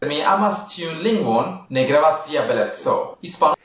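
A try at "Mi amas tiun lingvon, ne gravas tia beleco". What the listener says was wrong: Also, he's not following the accent pattern of Esperanto.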